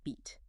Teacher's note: >> So like think about the vowel sound in the word beat. To make that sound, you move the front part of your tongue up high. So we call that a high front vowel.